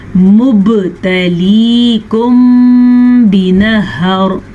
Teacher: बा पे कलकला करना है क्योंकि बा पे जज़म आ गई है। · इख्फ़ाए शफ़ी के हिसाब से जब कभी मीम साकिन के बाद हर्फ बा आ जाए तो दोनों होंठ बंद हो जाते हैं गुन्ने के साथ